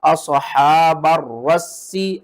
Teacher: را کو بھی 2 بار پڑھیں گے سختی کے ساتھ اور سین کو بھی 2 بار سختی کے ساتھ پڑھیں گے. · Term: تشدید